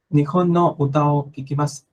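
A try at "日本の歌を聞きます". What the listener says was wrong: Ajá, muy bien.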